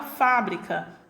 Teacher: minha sílaba tônica pronunciada com maior intensidade é a sílaba fa